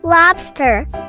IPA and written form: ˈlɑːbstər (Lobster)